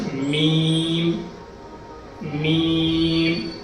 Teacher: میم اور با ایک ہی جگہ سے نکلتا ہے یعنی دونوں ہونٹوں کے درمیان سے میم نکلتا ہے